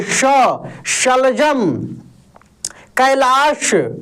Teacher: ये तलव्य श का उच्चारण दोस्त तालु से होता है।